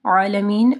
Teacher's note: عین کو واضح پڑھنا ہے گلے کے درمیانی حصے سے